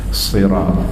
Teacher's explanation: Tapi makhraj huruf sad dia kena tarik. Sirat sad dia kena kembung kat dalam lah, sifat dia dia tebal.